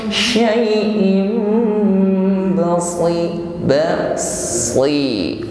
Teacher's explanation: kasrah tanwin bertemu ba, maka in kita rubah menjadi mim dengan bunyi dengung. Karena ini ada bacaan iqlab, in kita ganti menjadi in dengan berdengung.